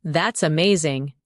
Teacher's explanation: When you say, "That's amazing." your tone rises with excitement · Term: rising tone